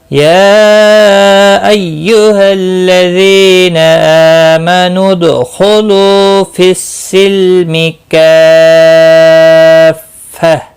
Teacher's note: یا مد منفصل ہے، 3 الف کے برابر کھینچ کر پڑھیں گے